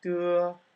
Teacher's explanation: When we say a d sound, we actually have a little bit of aspiration, so you want to eliminate that in Chinese. Hand in front of your mouth and de, no puff of air.